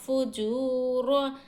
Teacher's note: वाऊ मद्दा को एक अलिफ की मकदार खींचेंगे